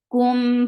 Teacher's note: Kum, for the circle your lips, and this is ikhfa shafawi. So keep your sound in your nose.